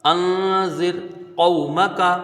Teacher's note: را یہاں پر باریک ہوگی اس لیے کیونکہ را ساکن ہے لیکن حروف مستعلیہ یہ دوسرے کلمے میں ہے ، ایک کلمے میں نہیں ہے، اس لیے یہاں پر اس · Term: را باریک